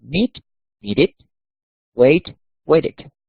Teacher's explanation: Esta ed no se va a pronunciar ed, nunca se pronuncia ed. En este caso se va a pronunciar como si fuera id, como una i cortica.